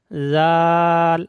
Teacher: জাল হালকা। জাল বলার সময় দেখবেন জিভের আগা এবং উপরের দাঁতের আগার সঙ্গে মিলবে